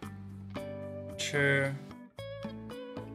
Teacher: Suara lidah ditekuk ke langit-langit mulut, aspirasi. Setelah lidah ditekuk ke langit-langit mulut, lafalkan konsonan CH.